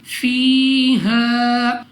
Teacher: या साकिन से पहले ज़ेर या मद्दा 2 सेकंड तक लंबा करना है